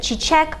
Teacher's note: chichek also ends in a k one of our voiceless consonants